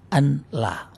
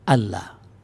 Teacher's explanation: maka huruf nun itu berubah menjadi huruf lam